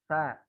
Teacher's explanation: Lidahnya digigit. Ada timbul bunyi sa. Jadi lidahnya nempel gigi seri atas. Sa. Ada lagi namanya huruf za.